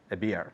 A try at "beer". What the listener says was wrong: Así es igual, beard, con una D al final.